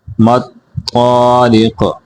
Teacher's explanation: ادراک ما الطارق، میم کو اس طا کے ساتھ ملائیں گے، طا کو موٹا کریں گے اور قاف کو موٹا کر کے پڑھیں گے